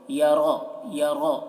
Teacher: اللم یرہ، یرہ را کو پر پڑھ رہے ہیں. یرہ، یرہ، یرا نہیں، یرہ، یرہ احد، احد دال میں قلقلہ.